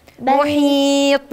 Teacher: أنا هقف على ساكن، والطاء حرف من حروف القلقلة. قط جد، لمجموعة في كلمة قط جد، فالطاء من ضمن الحروف وأنا هقف عليها، وإحنا في اللغة العربية بنقف على ساكن، فبالتالي هتبقى محيط.